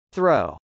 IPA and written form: θrˈoʊ (throw)